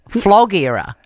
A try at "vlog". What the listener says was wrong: No, your vlog. No, if you pronounce the V, vlog.